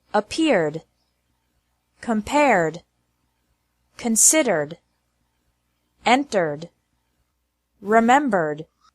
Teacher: ed is pronounced like D with no extra syllable after verbs ending with an R sound.